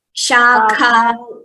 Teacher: the Kha Mahaprana should be heard clearer.